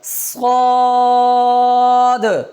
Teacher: اس کے آخر میں دال ساکن آ رہی ہے تو اس میں کلکلہ بھی ہوگا